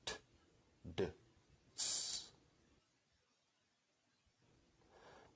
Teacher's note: sounds are produced with the tongue at or near the ridge right behind the Upper Front Teeth